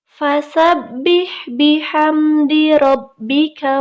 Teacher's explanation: huruf ba yang bertasydid artinya dibaca rangkap ditekan dan tidak ditahan